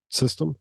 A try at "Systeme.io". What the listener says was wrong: And then, by the way, it's SYSTEME.io. It's not SYSTEM.io.